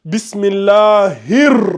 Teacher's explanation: quand tu arrives au hi, le hi ici et le ra, il y a une connexion parce qu'il y a une lettre solaire. Donc, tu passes au niveau du hi, tu dois introduire en même temps le ra.